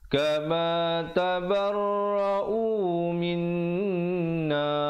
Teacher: Min dengungkan di situ dulu, baru masuk na